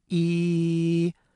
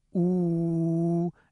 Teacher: But if you say the sound oo and look in your mouth, you might notice that a part of your tongue is up high, but it's the back part of your tongue, and it's raised up high in the back of your mouth. So we say that E is a front vowel and oo is a back vowel.